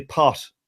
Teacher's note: the T at the end is a separate syllable it's a separate sound all its own